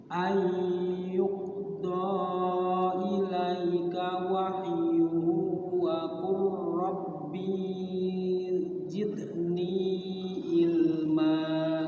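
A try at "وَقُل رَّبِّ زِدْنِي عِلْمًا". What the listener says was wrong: Bi-nya pendek. Wa qur rabbi zidni ilma.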